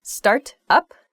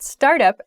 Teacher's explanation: when i say the phrasal verb start up there's a disconnect between the words